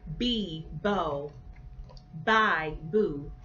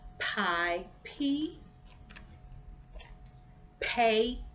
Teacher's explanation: the B is more of a voice sound whereas the P isn't